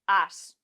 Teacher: En el estándar de Barcelona no se leería es, sino as, más o menos. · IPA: [əs]